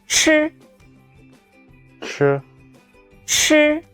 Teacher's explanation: The airflow is stronger than 知.